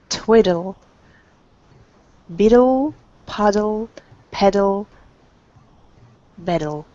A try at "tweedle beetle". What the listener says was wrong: make sure that for tweedle and beetle that it's the e sound it's not twiddle biddle it's tweedle beetle